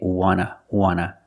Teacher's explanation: the T in want is an NT. So we don't pronounce the T and we say wanna, wanna. I just want to eat.